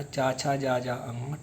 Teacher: चा वर्ग जो होता है वो तालु की हेल्प से बोले जाते हैं